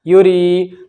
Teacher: یا ساکن سے پہلے را کے نیچے زیر ہے تو یہاں پر یا مد ہوگا یا کھینچے گا